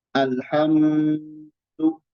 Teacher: mim sukun dibaca dengung, dibaca dengan dengung, ditahan